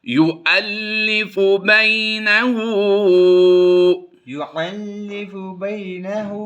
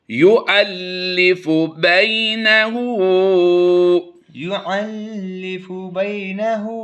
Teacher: واؤ کی آواز نہیں دیں گے بلکہ ہم حمزہ کی آواز دیں گے. حمزہ لام زبر ال کی آواز ہوگی.